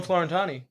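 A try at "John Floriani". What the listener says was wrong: John Floriani. There's T. There's no T.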